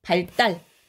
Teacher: 리을로 끝나는 한자 뒤에 요 디귿이 된소리로 발음되는 거